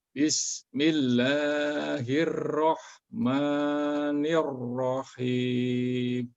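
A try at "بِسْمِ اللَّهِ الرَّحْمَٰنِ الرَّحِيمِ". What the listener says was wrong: Tapi yang kedua, yang sebelumnya jangan hirrahman, jangan hirrahman, tapi hirrah. Samakan dengan yang kedua.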